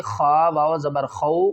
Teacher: خا کو حلقے اوپر والے حصے سے ادا کریں گے